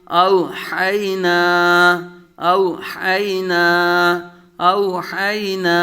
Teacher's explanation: واو لین اور یا لین، بغیر کھینچے بغیر جھٹکا دیے نرمی سے